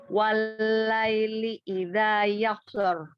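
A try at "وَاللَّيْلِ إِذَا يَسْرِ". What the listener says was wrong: Yassar. Sinnya kasih sofir. Yassar. Yassar. Sofirnya tampakkan dulu sifat sofir pada sinnya. Yassar.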